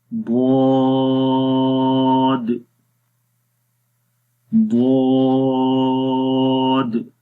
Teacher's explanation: جیسے ہی یہ زبان کی سائڈز لگتی ہے تو زبان تھوڑی سی آگے موو ہوتی ہے، اس کے اندر درازی آتی ہے، اور یہ آہستہ سے آتی ہے۔